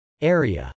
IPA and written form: ˈɛriə (area)